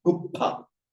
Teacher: the S is dropped, the consonant is doubled, and you have the H after it. Pushpa becomes uppa, meaning a flower. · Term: regular phonetic mutation